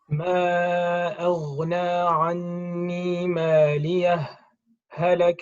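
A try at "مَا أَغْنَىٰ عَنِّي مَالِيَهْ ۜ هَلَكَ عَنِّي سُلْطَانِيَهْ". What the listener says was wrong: You took a breath.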